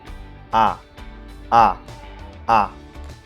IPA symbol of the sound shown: ɑ: